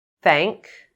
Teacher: don’t stop the airflow between your tongue and the top front teeth, otherwise /θ/ may sound like /t/